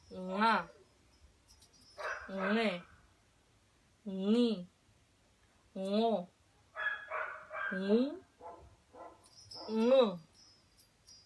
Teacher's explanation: Ya, acuérdense, levantando la parte trasera de la lengua a pegar la garganta. Y recuerden, es como una ñ, pero gangosa. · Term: ñ gangosa